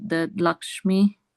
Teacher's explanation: So it is ik and sha, but that sha is the deep, the heavier sha.